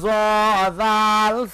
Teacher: জিহ্বার আগা সামনের উপরের দুই দাঁতের আগার সঙ্গে লাগাইয়া জাল